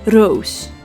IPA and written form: roːs (Roos)